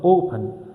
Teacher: The stress is on O, on the first syllable, not on the last syllable.